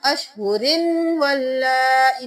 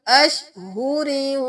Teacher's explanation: यहाँ पे हम अशहुरिन वल्लाई नहीं करेंगे, रा को वाव में मुदगम कर देंगे। अशहुरी वाव की आवाज आई, क्योंकि तशदीद है तो पहले हमने रा के साथ वाव को पढ़ा। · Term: इदगाम माल गुन्ना